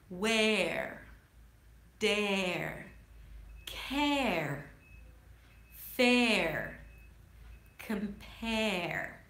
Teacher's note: The air as in care, starts with the eh sound, so you wanna drop your jaw here and make sure that the tongue is down.